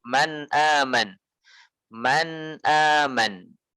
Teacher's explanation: ketika kita mengucapkan nun sukun, maka kita akan mendapati gunnah. Namun gunnahnya sangat ringkas, tidak lama. Temponya tidak memanjang. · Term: gunnah naqisah